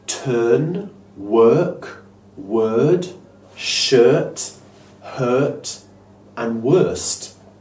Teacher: It's a long, neutral vowel sound. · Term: er sound